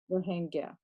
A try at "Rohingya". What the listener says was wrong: Rohingya, no H, Rohingya, Rohingya, Rohingya, Gya, no H, Rohingya.